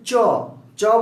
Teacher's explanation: চ বলতে গেলে কিন্তু জিহ্বাটা তালুর সাথে স্পর্শ লাগে, ছোঁয়া লাগে।